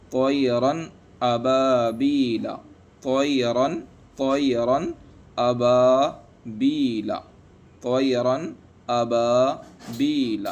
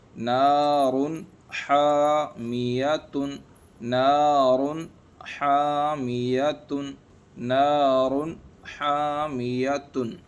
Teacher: یعنی اس نون کو ظاہر کر کے پڑھیں گے، یعنی بغیر غنہ کے پڑھیں گے۔ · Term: اظہار حلقی